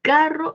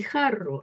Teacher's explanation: El par mínimo se encuentra entre la K y la J. Uno es oclusivo, pero el otro es fricativo.